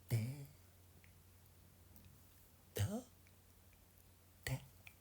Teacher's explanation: Sans doute, la consonne D, par exemple, se prononce en donnant du bout de la langue au-dessus des dents d'en haut